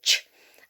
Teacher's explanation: the air back and then i'm allowing it to shoot out i can't breathe through my nose or my mouth i've blocked it with my tongue up against my palate that's my palette okay like that and i've got pressure okay · before i go ch i'm actually holding the air back and then i'm allowing it to shoot out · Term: plosive sound